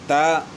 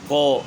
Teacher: تا کو موٹا نہیں کرنا، قو کو موٹا کرنا ہے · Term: ہم آواز حروف